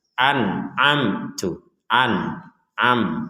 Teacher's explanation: dibaca dengan jelas enggak ada samar enggak ada dengung enggak ada huruf yang dimasukkan